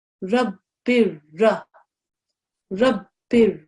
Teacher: you dropped the nasal sound